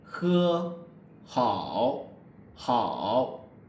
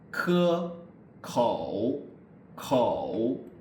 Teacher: the difference between he and ge, ke is he is a fricative sound, so you don't really, the back part of the tongue doesn't really touch the soft palate.